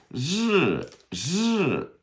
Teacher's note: So the zh is almost like it's like you start out with an SH, sh, and you kind of go to the R.